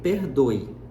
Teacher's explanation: Porém, se você observar na pronúncia, a palavra, ao invés de em português nós pronunciarmos esse E com som de E, a gente pronuncia esse E com som de I, pelo menos na maior parte da variedade linguística do português brasileiro. Pode ser que haja alguma região em que esse E tenha som realmente de E.